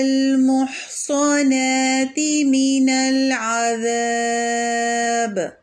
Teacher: لفظ العذاب میں آخری حرف با ہے اور اس کے پہلے کا جو حرف ہے اس میں مد اصلی بالالف ہے، تو با پر ہم سکون کر کے ٹھہرائیں گے اور العذاب ذاب میں ہم 2 4 یا 6 حرکت تک کھینچ کر ب پر ٹھہرائیں گے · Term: مد عارض للسکون